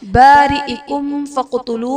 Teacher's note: میم ساکن کے بعد حرف با اور میم کے علاوہ فا ہے، تو یہاں پر اظہار شفوی کا قاعدہ ہوگا، یعنی میم ساکن میں ہم غنہ نہیں کریں گے۔ فقتلوا میں قاف حرف قلقلہ ساکن ہے، تو یہاں پر قلقلہ خوب ظاہر کریں گے۔